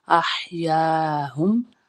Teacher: سا پہ میم ثم میم زبر ما، ہا پیش میم ہم، احیاہم. ہا وسط حلق سے ادا ہونے والے ہا ہے. حلق کا وہ والا حصہ جو درمیان میں ہوتا ہے اسے وسط حلق کہتے ہیں.